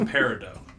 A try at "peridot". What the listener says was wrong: You pronounce the T in that one, I believe.